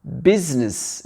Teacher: Le I, il n'est pas prononcé.